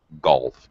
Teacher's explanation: this is a pure l so you just lift your tongue don't move it forward and back